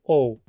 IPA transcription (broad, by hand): oʊ̯